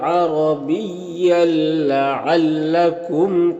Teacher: تنوین کو لام سے ملا کر بغیر غنہ کے پڑھیں گے، اس کو ادغام تام کہتے ہیں۔